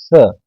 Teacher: स जीवा जो है हमारे निचले दांतो पर स्पर्श करेगी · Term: दंती स, दंतीय सा